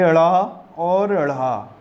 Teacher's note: बोल के देखिए, आपकी जीवा ऊपर उठेगी और फिर नीचे धड़ाम से गिरेगी। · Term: उत्क्षिप्त